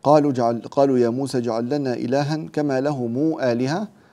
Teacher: ننتبه إلى صلة ميم الجمع بمقدار 6 حركات